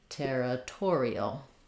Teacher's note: we just have our same e like in territory, and we add that dark syllabic l